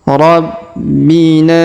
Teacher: Huruf B kita tahan dan tekan karena terdapat tanda tasdid. Rabbina. Huruf Na kita panjangkan 5 harokat karena ada tanda garis, tanda bacaan panjang 5 harokat.